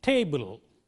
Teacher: this is a tone where the pitch falls from a high level to a low level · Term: falling tone